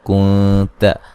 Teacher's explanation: كُنْتَ نون ساکن کا باریک اخفا ہے